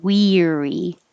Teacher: It just sounds like we, weary. And the vowel is E, very high, tongue in very high position.